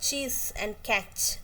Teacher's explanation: Air passage is completely closed when the tongue coming into contact with the tooth ridge. The air passage is completely closed and then releases slowly with a friction. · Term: palato-alveolar affricates